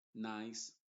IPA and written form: naɪs (Nice)